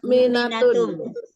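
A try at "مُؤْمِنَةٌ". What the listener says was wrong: Dipendekkan. Ingat jamak muannas salim itu perbedaannya dengan bentuk satunya adalah kalau bentuk satu pendek mu'minah, kalau jamak muannas salim panjangkan saja mu'minat.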